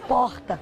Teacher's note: é quase um h é um som quase H · É um R gutural. Eu digo porta. É quase um H.